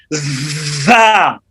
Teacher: را، حافظ صاحب زا کو دونوں دانتوں کو بند کر کے، نیچے اور اوپر والے دانتوں کو بند کر کے جب زبان درمیان میں لگے گی تو ایک سیٹی کی آواز بھی نکلے گی